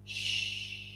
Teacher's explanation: if you are teaching the SH sound you can always show the lips are rounded it's a slow release of air